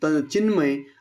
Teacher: बघितलं हे अनुनासिक संधीच उदाहरण आहे म्हणजेच काय तर या ठिकाणी त च्या स्पर्श व्यंजनापुढे म हे अनुनासिक आल्यामुळे त वर्गातील शेवटचा अनुनासिक येतं